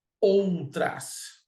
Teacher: Em outras, nós temos outras. Dois impulsos de voz, vogal O, vogal A. Né? Esse U será uma semivogal.